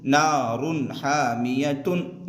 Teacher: जैसे यहाँ पर देखिए, रा दो पेश रुन, यहाँ पर इजहार होगा इसलिए कि तनवीन के बाद हरूफ हल्की के 6 हरफों में से हा आ रहा है, लिहाजा तनवीन की आवाज़ को जाहिर करके बिला गुन्ना के जल्द पढ़ेंगे